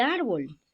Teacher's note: la sílaba tónica no está ya en la última, como en el caso de Cortés, sino en la penúltima sílaba